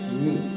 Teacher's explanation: ni is actually pronounced quite hard and short